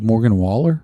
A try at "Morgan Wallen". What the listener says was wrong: You said Waller. It's Wallen.